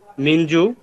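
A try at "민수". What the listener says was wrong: মিনসু। মিনসু, এটা কিন্তু শিয়ত। জিয়ত আর শিয়তের মধ্যে পার্থক্য আছে।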